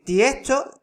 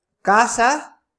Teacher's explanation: la s final parece una H al pronunciarse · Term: aspiración de la s final